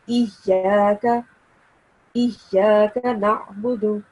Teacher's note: here is ya mushaddad, and you're supposed to stress a little bit on the sound of ya.